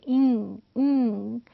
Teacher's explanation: पीछे आपको फील होगा कि टंग ने वहाँ पे ऊपर पैलेट के साथ एक जगह ब्लॉक की है और एयर पैसेज जो है वो ये वाला आपका एयर पैसेज है.